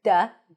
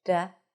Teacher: Because I'm obsessed with sounds. Because when you pronounce the D with a blade, it's a little heavier, duh. And when you pronounce it just with a tip, just this, there's less contact, less friction